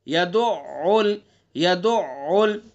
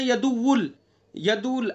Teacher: تشدید ہے تو عین کیا ہے؟ مشدد ہے، تو اس لیے عین کو مشدد پڑھیں گے اور حلق سے ادا کریں گے